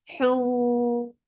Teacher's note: Hoon, temporary sukoon, because of waqf has turned this 2 counts vowel into 4 counts, and this is madarid li sukoon.